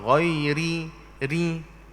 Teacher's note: Baris bawah, ra bila baris bawah dia jadi nipis. Dia jadi tarqiq. Dia tak jadi tebal.